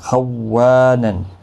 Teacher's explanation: اگر آپ نرمی کے ساتھ پڑھیں گے خونن تو تشدید نہیں پڑھی جائے گی۔ خوانن، و الف مدہ ہے، ایک الف کی مقدار کے برابر کھینچ کر پڑھیں گے۔